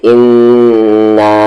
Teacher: تو مد کے سمبل کے بعد حمزہ ہے، تو اس مد کو ہم کھینچیں گے 3 سے 4 حرکت کے ایکول، اور حمزہ دوسرے ورڈ میں ہے، اسی لیے اسے ہم کہتے ہیں مد منفصل، یعنی کہ ڈسکنیکٹڈ مد، اور یہ آپشنل ہوتا ہے، یعنی کہ اسے ہم کھینچ بھی سکتے ہیں اور نہیں بھی، اسے ہم فالو کر بھی سکتے ہیں اور نہیں بھی۔